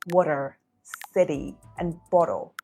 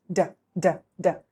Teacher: This is a voiced sound that the tongue taps the alveolar ridge very quickly. So it sounds like a quick d, d, d. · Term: alveolar flap